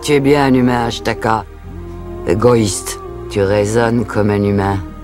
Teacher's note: Une voix gutturale, rauque, âgée, qui colle parfaitement à cette mère louve.